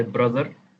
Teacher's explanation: I emphasize the R, so I roll my R's, so I say brother instead of brother. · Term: R sound emphasized